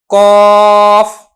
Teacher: جو زبان کا پیچھے آخر والا کنارہ ہے وہ جب اوپر والے تالو سے ملتا ہے تو پھر اس سے قاف ادا ہوتا ہے